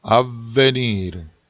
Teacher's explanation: 좀 세게 발음을 하셔야 V 두 개가 티가 납니다. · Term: V가 두 개